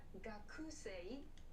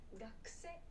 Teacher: So this u sound is very, very quick and soft. Gakse will make it sound natural.